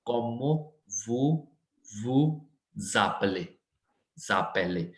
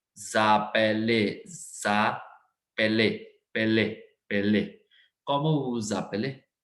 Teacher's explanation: whenever the first word ends with s and another word starts with the a vowel, then we have to pronounce it z sound. It is z sound.